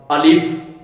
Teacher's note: الف کا مخرج کیا ہے؟ یہ منہ کے خالی حصے سے ادا ہوتا ہے، منہ کے خلا سے الف۔